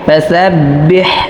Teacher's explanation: এই হাটা অবশ্যই কণ্ঠনালীর মধ্যখান থেকে উচ্চারণ করতে হবে , নাহলে কিন্তু পরিপূর্ণ হরফ আসবে না। ফাসাব্বিহ, বাজের বি, হা